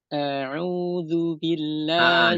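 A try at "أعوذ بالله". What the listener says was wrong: Jangan memanjangkan jangan memanjangkan a. Perhatikan. A'udzu a. A'udzu, jangan a'udzu. A-nya pendek.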